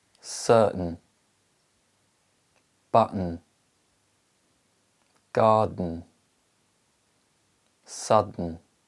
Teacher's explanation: the t and d sounds are followed by the m sound the air is released nasally which means the tongue remains in position and the air is released through the nose